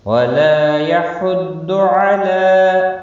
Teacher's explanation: ضاد مستعلیہ ہے، پر پڑھا جائے گا، لام کے اوپر کھڑی زبر ہے، ایک الف کے برابر کھینچ کر پڑھیں گے۔